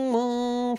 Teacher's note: تشدید کی وجہ سے ایک الف کے جتنا غنہ کریں گے